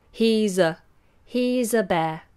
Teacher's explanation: when I say ah I don't say he's aa bear I make it a schwa